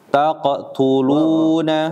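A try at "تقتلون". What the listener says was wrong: Ulangin, qafnya jangan diputus. Taqo.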